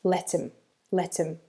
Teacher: in fast in fast speech let's call it normal speech right we dropped the H on him and we link it to let